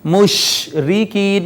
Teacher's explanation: شین پر آواز مخرج میں پھیل جاتی ہے، اس کو صفت تفشی کہتے ہیں۔ مشرکین، یہ جو شین میں آواز ہم نے تھوڑا پھیلائی ہے، یہ صفت تفشی ہے۔